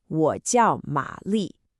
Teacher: 我叫玛丽. You hear that dipping tone on 我 and that sharp falling tone on 叫